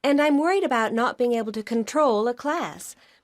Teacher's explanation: we're going to be using the weak form of about. So the A will be quite soft, it'll be about.